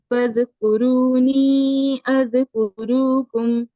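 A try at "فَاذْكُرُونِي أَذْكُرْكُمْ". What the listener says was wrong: کرو نہیں ہے کرکم. کرو کیسے پڑھ رہی ہیں؟ واؤ مدہ ہو رہا ہے یہاں پہ.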